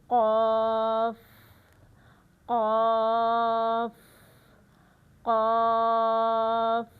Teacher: काफ इस इसमें जो पढ़ने का हम इसका तरीका देखेंगे वो ये है कि जबान की जड़ जब मुंह में नरम तालू को लगे तो हर्फ काफ अदा होता है। · اس میں جو پڑھنے کا ہم اس کا طریقہ دیکھیں گے وہ یہ ہے کہ زبان کی جڑ جب منہ میں نرم تالو کو لگے تو حرف قاف ادا ہوتا ہے، جیسا کہ قاف، قاف، قاف، اور یہ ہر صورت موٹا ہی پڑھا جائے گا۔